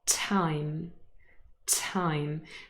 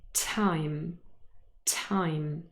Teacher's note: think i only ever say this word in an aspirated way you can hear and feel this little puff of air even just here on your bottom lip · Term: aspiration